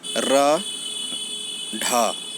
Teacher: उसी तरह से उत्क्षिप्त, इनके उच्चारण में जीभ ऊपर वाला उठाकर झटके के साथ नीचे गिरता है